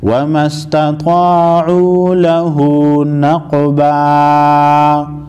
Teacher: فما استطاعوا ان یظہروہ وما استطاعوا لہ، وما استطاعوا لہ نقبا، قاف ساکن کو وقف، قاف ساکن کو ہلا کر پڑھیں گے، یعنی ان پر قلقلہ کریں گے